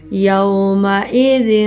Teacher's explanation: ذال کو ہمیشہ نرمی سے، اس میں زا کی آواز نہیں آنی چاہیے۔